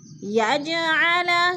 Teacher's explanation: جیم ساکن ہے، حروف قلقلہ میں سے ہے تو ادھر قلقلہ کریں گے